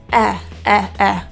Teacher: Eh has a very neutral opening. Eh. Teeth are slightly open, but my lips aren't really doing anything. They're just chilling.